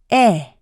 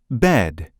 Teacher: The corners of the mouth are pulled to the sides, making the lips retracted like a slight smile. The eh is lax and short in duration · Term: vowel sound eh